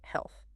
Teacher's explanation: It ends softly, with your tongue between your teeth